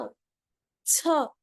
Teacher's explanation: अगर नॉर्मल छ छाता वाला छ है और इसमें हवा भर दी गई तो ये क्या बन जाएगा, एस्पिरेटेड छ.